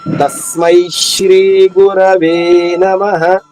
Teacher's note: త పైన ఆఘాత వస్తుంది స్మై పైన ఆఘాత వస్తుంది